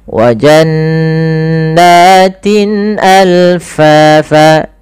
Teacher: nunnya dibaca dengan gunnah, tahan. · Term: izhar halqi